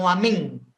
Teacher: tapi kita menyamarkan W ya seolah-olah kita ngomong Eng ng ya seolah-olah kita bilang waming ya dan ditahannya itu tiga harakat · ikhfa ini kita tidak menjelaskan bunyi Nun jadi kita tidak membacanya wyar tapi kita menyamarkan W ya seolah-olah kita ngomong Eng ng ya seolah-olah kita bilang